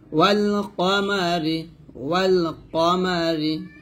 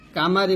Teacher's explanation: কফটা মোটা করে, কফ জবর ক হবে, সবসময় ক হবে, কা কখনো হবে না